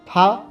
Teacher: इसमें निचले होठों से ऊपर के दांतों पर हवा को रोका जाता है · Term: लब दंती